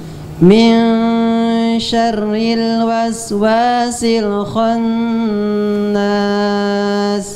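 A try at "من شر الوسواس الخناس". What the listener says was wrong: Untuk kho yang sebelumnya bagus sebenarnya. Tinggal kho. Kho-nya tebalkan. Jangan khan tapi kho. waswasil kho, jangan khannas tapi khonnas. O-nya jelaskan.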